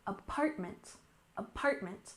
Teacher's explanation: We have emphasis on the second syllable, apartment, apartment.